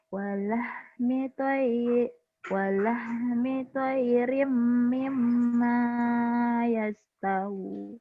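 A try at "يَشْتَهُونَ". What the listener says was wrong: Shinnya gede. Napasnya nih kebanyakan.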